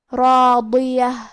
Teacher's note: ہمیں یہ تینوں حرف کو بھاری آواز میں پڑھنا ہے۔ راضیہ، آخری میں تا مدورہ ہے، ہم یہ کلمہ پہ رکیں گے تو اس پہ ہا سے رکیں گے